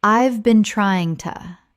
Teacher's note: When spoken naturally, the h in have often disappears and the words run together.